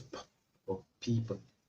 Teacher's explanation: it is the upper and the lower lip that come together to produce the sound P